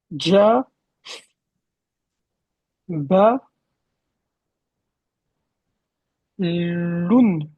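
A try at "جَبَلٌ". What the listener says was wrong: Juste attention à ne pas faire une prolongation. C'est ja.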